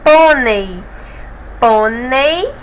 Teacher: termina aqui em ditongo a penúltima sílaba é mais forte portanto é acentuado temos o circunflexo aí mais uma vez você